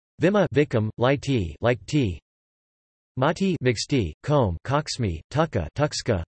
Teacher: at the end of a syllable it is pronounced as a fricative whose place of articulation is similar to the preceding vowel, velar X after a back vowel, A-O-U, palatal C after a high front vowel, I-Y. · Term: fricative allophones